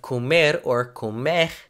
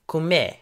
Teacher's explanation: Instead of pronouncing a full R or H sound, many people in Brazil just drop the sound altogether.